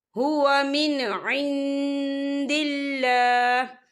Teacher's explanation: اور یہاں دیکھیں عین، یہاں نون ساکن ہے، نون ساکن کے بعد دال آ رہا ہے اور دال جو ہے اقفا کا ورڈ ہے تو ہم یہاں اقفا کریں گے، نون ساکن کی آواز کو ناک میں چھپائیں گے